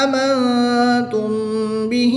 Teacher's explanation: نون ساکن کے بعد تا حرف اخفا میں سے ہے تو یہاں پر اخفا ہوگا یعنی غنہ زبانی کر کے پڑھیں گے